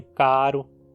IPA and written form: kaɾʊ (caro)